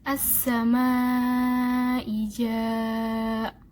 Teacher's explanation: mad wajib muttasil. Panjangnya 4-5 harokat